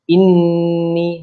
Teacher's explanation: إِنِّي huruf nun, sebutan pada huruf nun itu sedikit dengung. Itu panjang dengung dia dua harakat. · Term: wajibul gunnah